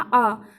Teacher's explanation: तो आप दोस्तों देखेंगे कि इसमें जो है कहीं ना कहीं हमारी जो जीवा के मध्य भाग का प्रयोग हो रहा है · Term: मध्य स्वर